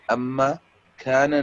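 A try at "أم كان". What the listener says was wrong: امکان، امکان، اما نہیں، امکان. امکان.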